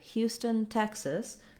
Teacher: the stress is on Houston, first syllable, and Texas, first syllable.